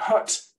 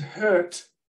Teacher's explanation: That R there, in my accent, I don't even pronounce it, but it changes the vowel before it, kind of makes it longer.